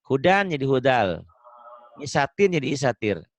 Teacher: bunyi N-nya berubah menjadi bunyi di hadapannya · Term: idgham